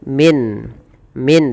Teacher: Nun itu berarti Jelaskan suara nunnya min min tidak boleh ditahan dan di sini kita hukumi dengan izhar halqi izhar halqi kemudian